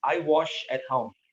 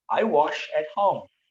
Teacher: Was and wash, different verbs, but in Carioca, Rio de Janeiro accent is like the same.